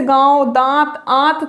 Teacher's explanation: अब बात अगर अनुनासिक की जाए तो नाक से वायु कम निकलती है, मुख से वायु अधिक निकलती है